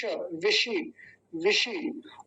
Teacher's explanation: तालव्य शकार बोलते हैं इसको, तालु से बोला जाता है